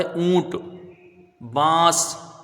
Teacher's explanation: تو ناک میں جو آواز یہ جاتی ہے یہ سمجھ لیجئے اخفا ہے